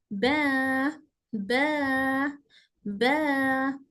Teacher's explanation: दोनों होट अपर and lower lip पूरी तरह बंद होते हैं और फिर खुलते हैं